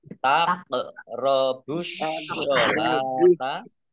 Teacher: kof sukun bacaan kolkolah, dibaca memantul, ditampakkan pantulannya